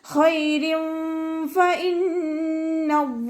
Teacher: ഖൈരിൻ ഫ ഇന്നല്ലാഹ്, ഫ ലൈറ്റാക്കിയിട്ട് ഉച്ചരിക്കുക കേട്ടോ. മേലെ മുൻപല്ലിൻ്റെ അറ്റം, താഴെ ചുണ്ടിൻ്റെ ഉൾവശത്ത് വെറ്റായ ഭാഗത്ത് വെക്കുക.